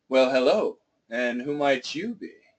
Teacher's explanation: that you gets the emphasis